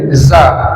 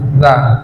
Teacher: Ujung lidah yang menempel ke ujung gigi seri atas. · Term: zal